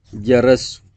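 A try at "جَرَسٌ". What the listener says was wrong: On a dit que c'est Tanwin, non? Donc Tanwin donne les sons des N. Tanwin donne les sons des N dans la prononciation.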